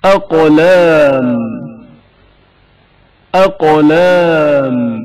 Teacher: قاف کی آواز شدت کے ساتھ ادا ہوتی ہے اور اچانک منقطع ہو جاتی ہے